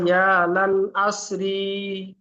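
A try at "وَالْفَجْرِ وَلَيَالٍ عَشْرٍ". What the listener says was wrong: হুম, হলো না, দেখেন। ওয়ালায়ালিন, এখানে লাম দুজের লিন হবে, ওয়ালায়ালিন আশর। আর এখানে ওয়াল ফাজরি হবে না, ওয়াল ফাজর। কারণ আয়াতের শেষে যদি আমরা থামি তাহলে রকে কি করে পড়তে হবে? সাকিন করে পড়তে হবে। তাহলে ওয়াল ফাজর। হুম, ওয়ালায়ালিন আশর।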